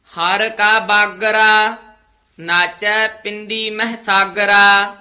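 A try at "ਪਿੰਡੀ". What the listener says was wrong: पिंदी नहीं कहना पिंदी तदे नाल उचारण करना है हर का बागरा बागरा नहीं कहना थोड़ा जा कस के बोलना है हर का बागरा इथे विश्राम नाचे इथे यमक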